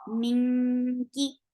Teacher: Kum, min, this is ikhfa. Keep the sound in your nose and go towards the makhraj of kaf.